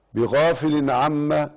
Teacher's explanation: بغافل عما إظهار حلقي. لماذا؟ لأنه تنوين وجاء بعده العين، والعين من حروف الإظهار الحلقي